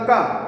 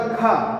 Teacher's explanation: ख में देखो हवा आपको एकदम हाथ पे टकराई इसका मतलब खा वर्ग में हवा क्या है ज्यादा निकली हमने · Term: महाप्राण